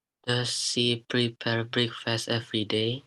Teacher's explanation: Yes, intonasinya betul, naik. She-nya juga betul, bibirnya rada monyong.